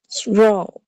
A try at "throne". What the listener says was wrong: Make sure you're saying that N sound at the end.